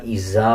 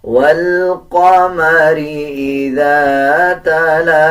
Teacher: زا نہیں بلکہ ذال پڑھا جائے گا اور جب ذال کو ادا کیا جاتا ہے تو زبان کی نوک دونوں دانتوں کے درمیان لے کے آئیں گے تب ذال صحیح ادا کیا جاتا ہے.